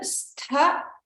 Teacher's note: Stha, we have to focus on the mahaprana there.